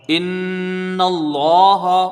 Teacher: حمزہ کو نون سے ملا کے پڑھا جائے گا کیونکہ نون مشدد ہے، ایک الف کی مقدار یہاں پر غنہ ہوگا ، نون کو لام سے ملائیں گے، لفظ اللہ سے پہلے